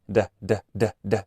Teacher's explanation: este sonido de D se caracteriza porque se libera aire cuando se pronuncia